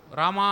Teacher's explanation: ర లో ఉండే ఆ కంటే మా లో ఉండే ఆ ని ఎక్కువ సమయం పలుకుతాం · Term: ప్లుతము